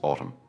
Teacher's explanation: The N at the end is silent, so do not pronounce it. It is just autumn.